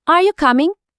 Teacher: কামিং বলার সময় আমার গলার শরটা কেমন উপরের দিকে উঠে গেল এটাই হলো রাইজিং ইন্টোনেশন।